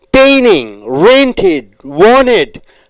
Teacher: the T sounds are reduced